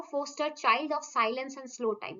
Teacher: यहाँ पे क्या रिपीट हो रहा है, long I vowel is repeated